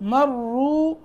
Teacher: مرو را موٹا کیونکہ پیش ہے